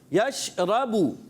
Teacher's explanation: تفشی ایک صفت ہوتی ہے کہ منہ میں آواز پھیلتی ہے. آواز کو کلیئر رکھنا ہے اور را کو پر کر کے پڑھنا ہے